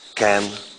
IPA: kæn